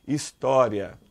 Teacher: o i é uma semivogal e o a é uma vogal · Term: ditongo